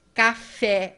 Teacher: Café, o fé é o mais forte. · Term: sílaba tônica